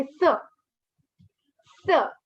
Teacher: S, it's a fourth tone, it's a falling tone. So you just, your pitch drops.